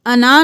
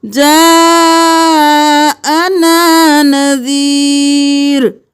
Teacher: نا سے پہلے حمزہ ہے تو ہم نون کے ساتھ الف کو بھی پڑھیں گے